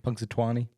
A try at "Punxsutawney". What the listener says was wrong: You don't have to add the twan. Just ton.